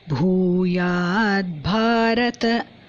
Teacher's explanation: Bha in Bhuyad and Bharata. Both are Mahaprana.